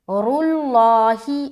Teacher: اس کے بعد را کو موٹا رکھیں گے. رُلّٰہِ، دونوں چیز موٹا ہوگا، را بھی اور لام بھی